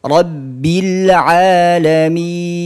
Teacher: ketika panjangnya Min ini jangan sampai dari hidung karena panjangnya ini dia keluarnya dari aljauf aljauf itu adalah rongga tenggorokan jadi kita bukan baca seperti ini